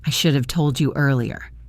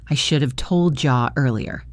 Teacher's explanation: This often sounds like told jaw. The D and Y sounds combined to make a J sound.